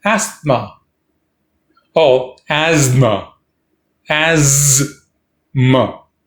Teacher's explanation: Stress on as. The second syllable, m, is a schwa.